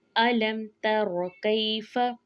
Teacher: तो यहाँ पे इजहार शफवी का कायदा है। अलम को खींच कर नहीं पढ़ेंगे बल्कि जल्दी पढ़ते हुए तर्रा को पढ़ेंगे, और तर्रा में भी दोनों हरूफ के ऊपर ज़बर है तो अदायगी जल्दी करेंगे।